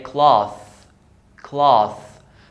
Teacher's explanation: The TH is pronounced as voiceless TH, which is as in thank. So I say cloth, cloth.